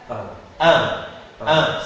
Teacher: la voyelle nasale 1, c'est la voyelle ouverte est mais avec l'articulation l'air qui va sortir par la bouche et par le nez.